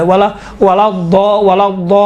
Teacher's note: دیکھیے خود لام ہے نا، لام یقیناً حروف لین میں سے باریک پڑھا جاتا ہے، کاملاً باریک ہے، لیکن یہاں پر لام چونکہ لام کے اوپر تشدید ہے، تشدید کی وجہ سے لام کا تلفظ تھوڑا سا موٹا اور ضخیم اور غلیظ طریقے سے کیا گیا ہے